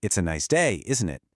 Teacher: With my voice going up, I'm actually asking what you think. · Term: question tags